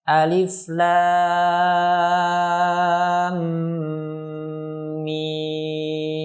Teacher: dibaca 6 harokat pada huruf mim. Kemudian didengungkan mimnya